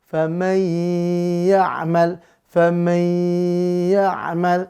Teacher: Maka di sini nun ketemu ya, bertemu dengan huruf ya, ya. Maka bigunnah masuk dengan dengung, lebur huruf nun sukun ke ya dengan dengung.